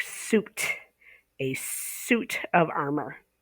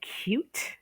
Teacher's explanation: the long u without the y sound